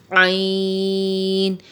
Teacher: عین جو ہے یہ حروف حلقی میں سے ہے اور حلق کے درمیانی حصے سے ادا ہوتا ہے